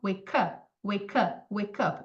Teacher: Vou dar um exemplo muito fácil, mas, por exemplo, a palavra, na verdade, o phrasal verb wake up, wake up. Wake termina com som de k, e o up começa com som de vogal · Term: Connected Speech